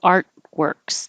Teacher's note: And artworks, I don't pronounce that T artworks because it takes time. So I put my tongue in the T position, art, and then immediately make my W, artworks.